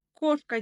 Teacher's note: кошка деген сөзде ударение бірінші буынға түсіп тұр